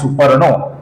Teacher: सुपर्णहा का जो विसर्ग है इसके आगे भ मृदु व्यंजन आया है, तो इसकी वजह से सुपर्णहा का बना है सुपर्णो